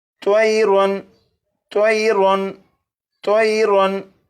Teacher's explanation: तनवीन के बाद हमज़ा है और हमज़ा हरूफ हल्की में से है, इसलिए तनवीन पर गुन्ना नहीं करेंगे